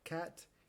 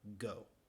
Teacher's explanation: estos dos sonidos se producen en la parte de atrás de la boca casi a la garganta